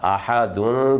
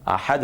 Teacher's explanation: جب ہم اس کو وقف کریں گے تو وقف میں یہ پڑھا جائے گا آبادا، چونکہ جو زبر کی تنوین ہوتی ہے وہ وقف میں الف کے ساتھ بدل جاتی ہے، جبکہ زیر کی تنوین اور پیش کی تنوین جو ہے وہ ساکن ہو جاتی ہے